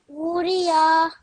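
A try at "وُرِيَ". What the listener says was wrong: Bit longer this woo sound.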